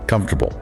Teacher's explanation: We crush the middle. It sounds like three syllables or even two and a half. · The ore and the a both get reduced or disappear entirely.